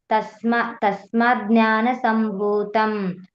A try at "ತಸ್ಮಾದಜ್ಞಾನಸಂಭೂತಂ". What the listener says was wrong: ಇಲ್ಲಿ ನೋಡಿ ತಸ್ಮಾತ್ ಜ್ಞಾನ ಬಿಡಿಸಬಾರ್ದು ಅಲ್ಲಿ. ತಸ್ಮಾದ್ ಅಜ್ಞಾನ ಸಂಭೂತಂ ಬಿಡಿಸಿದ್ರೆ ಏನಾಗುತ್ತೆ, ಜ್ಞಾನ ಬೇರೆ ಆಗುತ್ತೆ, ತಸ್ಮಾತ್ ಬೇರೆ ಆಗುತ್ತೆ. ತಸ್ಮಾದ್ ಅಜ್ಞಾನ ಸಂಭೂತಂ. ಅಲ್ಲ ಅಲ್ಲ, ತಸ್ಮಾದ್ ಅಜ್ಞಾನ. ಇಲ್ಲ, ನೀವು ಹೀಗ್ ಮಾಡಿ, ತಸ್ಮಾತ್ ಅಜ್ಞಾನ ಅಂತ ಹೇಳಿ.